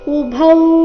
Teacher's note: ಇಲ್ಲಿ ಭೌ ಮಹಾಪ್ರಾಣ ದೀರ್ಘ